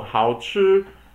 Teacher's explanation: 好 is 三声, and then, or third tone, and then 吃 is 一声, which is first tone.